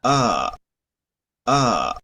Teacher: la R para alemán estándar nos va a llevar a lo que sería el sonido de la A centralizada.